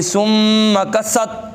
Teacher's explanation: سین کی آواز آنی چاہیے، سین حروف صفیریہ میں سے ہے